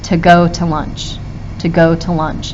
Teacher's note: You'll hear that I stress this go and lunch But the twos I kind of just roll over.